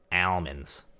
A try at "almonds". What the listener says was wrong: Almond. Almond. Almond. Almond. You're not pronouncing the L enough. All. all. All. Mund. Almond.